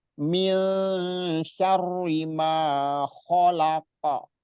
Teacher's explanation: nun sukun atau tanwin ketemu huruf yang 15 itu maka dibacanya cara bacanya disamarkan atau diikhfakan